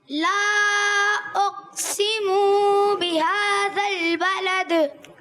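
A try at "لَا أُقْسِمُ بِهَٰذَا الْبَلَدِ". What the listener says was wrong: ला उक़सिमु, मीम की पेश प्यारे बच्चे लंबी नहीं करनी. ला उक़सिमु बिहाज़ल बलद.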